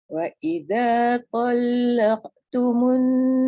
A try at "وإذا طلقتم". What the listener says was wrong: Qalqalah tu lebih kan. Wa idza talaqtumun.